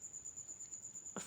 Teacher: सनाया सनाया ऊपर वाले दो दांत। जब सनाया का किनारा जो है ना नीचे वाले होठ के त हिस्सा से लगे तो फ अदा होता है।